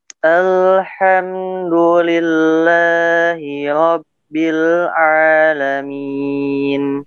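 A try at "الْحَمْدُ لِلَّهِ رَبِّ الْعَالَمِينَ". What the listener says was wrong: Ain, jelaskan ain. Kemudian alham yang terlalu lama. Sebenarnya betul, cuma sedikit. Ya, ada lebih sedikit terlalu lama. Alhamdu. Ya, memang lam di situ sukun, jangan dihentak dengan alhamdu.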